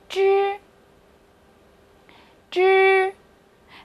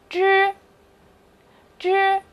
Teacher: 注意发这个音的时候，把舌头轻轻地卷起来，它是一个翘舌音，不要再放平了